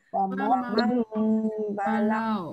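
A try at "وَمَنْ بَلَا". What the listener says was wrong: Ya, waman balau. Man balau. Nah, dia kalau kita ikutkan di buku kita ni, bunyi mim itu tidaklah berat sangat. Jangan jadi mim geram ya. Wa mam, tekan kuat-kuat ya. Wa mam, balau.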